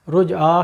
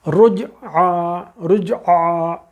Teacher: ایک دم حلق سے عین آئے گا اور اس کے ساتھ الف ہے